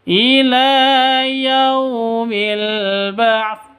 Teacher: Ba'ts sa-nya jangan dihilangkan. Terus disukunkan gitu ya, bukan di kasroh.